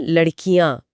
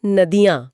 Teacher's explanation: जब हम शब्द को लंबा करते हैं यानी बहुवचन बनाते हैं तो पहले वाले स्वर पर जोर कम हो जाता है और वह छोटा हो जाता है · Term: छोटी ई